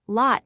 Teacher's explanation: Additionally, the O sound differs significantly. In British English, lot uses a rounded back vowel. In American English, lot uses a more open back vowel, sounding more like ugh.